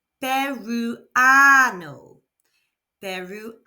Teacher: there are no accents, so the stress naturally falls on the second to last syllable